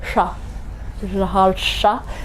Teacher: the second sha is with the tongue up